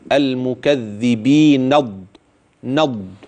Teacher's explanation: هوصل النون في كلمه المكذبين بكلمه الضالين